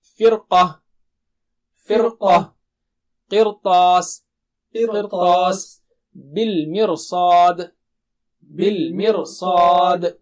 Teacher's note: را کو موٹا کرتے ہوئے سب حالتوں میں